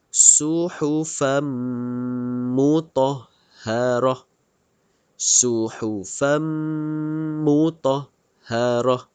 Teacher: Tutup mulut dua harakat. Dengungkan dua harakat. Keluarkan angin mengikut hidung. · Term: idgham ma'al ghunnah